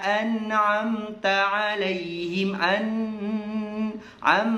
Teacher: ketika kita mengeluarkan huruf dalam keadaan sukun, diletakkan di hidung sedikit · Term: sifat tawassut